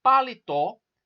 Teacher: a sílaba tônica da palavra paletó é o TO, é a última sílaba. Ela é uma palavra oxítona.